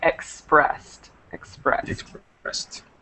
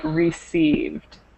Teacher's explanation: all of these words should be pronounced not with the extra syllable